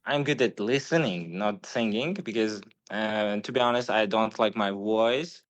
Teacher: That Russian v is softer than the English v.